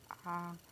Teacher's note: मुख द्वार के आधार पर विवृत। मुंह खुला हुआ हो, पूरा मुंह खुला हुआ